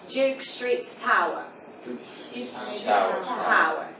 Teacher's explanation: at the beginning of the word it's going to be a very wet t so it's not going to be a Airy t t it's